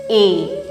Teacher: Commencez en disant E, mais en fait, vous tombez sur le son I. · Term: diphtongues